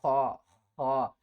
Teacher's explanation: خا کو ہم نے حل کے سب سے اوپر والے حصے سے ادا کرنا ہے، اور تھوڑی سی آواز آئے گی